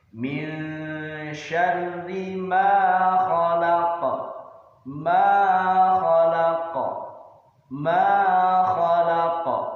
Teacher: Tentu saja beda, karena pada ayat yang kedua huruf ma ada harokat fathah di depannya bertemu dengan alif. Maka cara membacanya adalah panjang dua harokat.